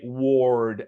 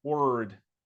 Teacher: some people tend to say ward and they kind of like round their lips, but it's actually word. You skip right over the O.